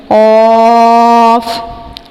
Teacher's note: یہ زبان کی جڑ اور تالو کے نرم حصے سے ادا کریں گے